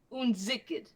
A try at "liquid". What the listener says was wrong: Liquid laddie. Lick. Say lick. You said ziquid laddie. It's liquid.